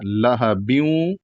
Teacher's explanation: اور گنہ کی مقدار کتنی ہے کہ ایک الف سے لے کر کے 2 الف یا 2 حرف کے برابر جو ہے اس کو کھینچنا ہے، یعنی ناک میں آواز رکھنی ہے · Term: غنہ